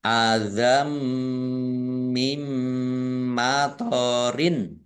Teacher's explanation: masuk dengan mendengung ya mendengung mim ditandai mimnya ada tasdidnya ditahan dua harakat biar tampak dengungannya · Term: idgham bunah, idgham bi gunnah